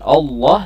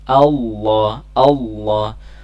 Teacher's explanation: jalalah sebelumnya ada huruf alif yang berharakat fathah maka perlu diperhatikan harakat Alif harus konsisten berbunyi a jangan sampai o